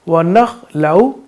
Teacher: خا کو پر پڑھیں گے کیونکہ حروف مستعلیہ ہے